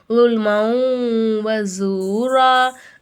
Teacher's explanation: லைட்டா வந்து குன்னா செய்யணும் குன்னா மூக்குல மறைச்சு ஓதணும்